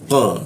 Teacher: Nah, ini huruf qa ya, di siku tenggorokan lidahnya kita naikkan dia. Qa, tidak ada hembusan udara ketika membaca huruf qa. Qa, lu di bawah hidung dia.